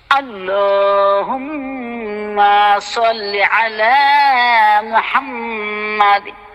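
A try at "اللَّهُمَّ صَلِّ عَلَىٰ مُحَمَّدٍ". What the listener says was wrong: এই হুম্মা মায়ের মধ্যে হালকা টান পড়ছে। আল্লাহুম্মা মা মা টান নাই আবার।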